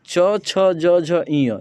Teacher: च वर्ग जो होता है, ये टोटल तालु से निकलता है, इनका उच्चारण तालु से होता है